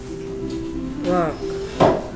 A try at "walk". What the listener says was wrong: Work가 아니고 L이 소리 안 납니다. Walk.